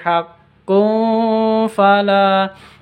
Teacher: tanwin bertemu dengan fa, samar didengungkan, ikhfa